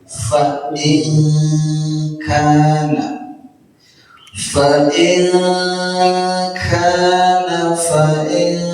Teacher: nun mati ketemu kaf ya namanya ikhfa ditahan samar-samar bunyinya